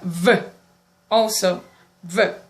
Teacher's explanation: The lower lip and the upper teeth. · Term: labiodental sound